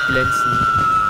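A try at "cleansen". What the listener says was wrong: Glänzen? Glänzen? Das ist ein C, kein G.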